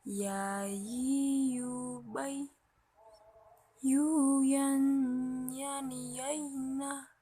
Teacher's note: Melafalkan huruf ya dikeluarkannya dari tengah lisan disentuh ke langit-langit.